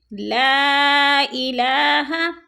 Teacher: لا پہ مد منفصل ہے، حروف مدہ کے بعد حمزہ دوسرے کلمے میں ہے تو مد منفصل۔ 4 الفی مد ہے، اس کو 4 الف کے برابر ہم نے کھینچ کر پڑھنا ہے۔